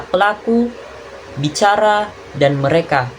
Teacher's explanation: bunyi bilabial, yaitu bunyi dua bibir. Cara kita melakukannya itu bibir bawah dan bibir atasmu itu bertemu atau bersentuhan.